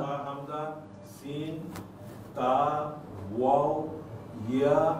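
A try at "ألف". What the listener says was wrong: না এখানে কি বলতে হবে? আলিফ। এখানে ইয়াটা আলিফ হয়ে যাবে। যখন ইয়া বা ওয়ের উপরে ছোট আলিফ থাকবে তখন এটাকে আলিফ পড়তে হবে, এটা আর ইয়া পড়া যাবে না। না, এটা কিন্তু এখন আলিফ হয়ে গেছে অক্ষরটা।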